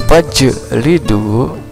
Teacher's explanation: karena ini jimnya adalah qalqalah harus dipantulkan. Fajlidu, berarti jim di sini adalah qalqalah sugro.